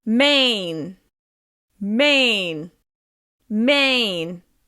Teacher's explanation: However, remember that 1-syllable content words are still stressed. You need to make the vowel sound in Maine longer, louder, and higher in pitch.